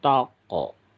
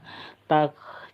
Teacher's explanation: Jadi cuman ada udara yang keluar karena huruf K ini termasuk huruf yang mempunyai sifat alhamas. Alhamas artinya ada udara yang keluar dari mulut kita.